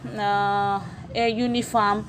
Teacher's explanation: Uniform starts with a vowel, but the first sound is j or y sound.